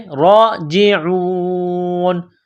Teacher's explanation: میں کھینچنا ہے، عین کو واو کے ساتھ ملانا ہے، راجعون، جب اس آیت پر سٹاپ کریں گے تو نون کو سائلنٹ کریں گے